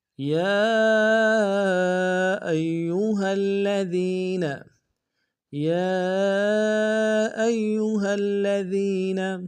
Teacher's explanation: یا ایہا الذین، یا ایہا الذین، یا میں یا کے اوپر کھڑا زبر ہے اور مد منفصل ہے، کم سے کم 2 الف دال میں کھینچیں گے۔ حمزہ کو یا کے سامنے لائیں گے، یا کے اوپر تشدید زور دیں گے۔